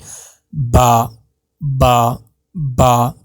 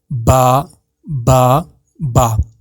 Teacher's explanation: با کے نکلنے کی جگہ جو ہے وہ ہے آپ کے دونوں لپس۔ جب یہ آپس میں جڑتے ہیں تو با ادا ہوتا ہے، اور جب یہ ٹکر کھا کر الگ ہو جاتے ہیں تو یہ پراپر طریقے سے ادا ہوتا ہے۔